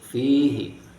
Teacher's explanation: apabila sebelum domir hu atau hi ada huruf mati seperti di sini fi ada ia mati, maka hu dan hi dibaca pendek